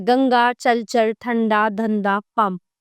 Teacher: इस ध्वनि का उच्चारण केवल नाक से होता है। इसका उच्चारण न या म के समान होता है। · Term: अनुस्वार